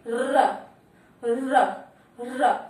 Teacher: प्रकंपित यानी हमारी जीवा में रगड़ उत्पन्न होती है, कंपन उत्पन्न होता है, जैसे बोलिए र का उच्चारण करिए, र, र, र, हमारी जीवा अंदर कंपन करती है, इसलिए इसे क्या कहा जाता है, प्रकंपित कहा जाता है।